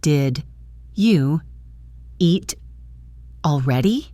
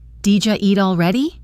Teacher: Did you hear that? Did you became Dija through assimilation? Eat and already linked together.